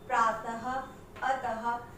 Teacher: ये इनके अंत में अह की आवाज आती है, और इसे जो ये दो बिंदियां लगाई जाती हैं इनको कहा जाता है विसर्ग, ठीक है।